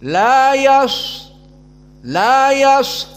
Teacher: mengilzamkan shad di saat disukunkan ada tenggang waktu, maka dibaca sedikit panjang.